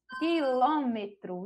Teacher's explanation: tem a sílaba tônica localizada aí na antepenúltima sílaba, contando de trás para frente a terceira sílaba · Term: proparoxítona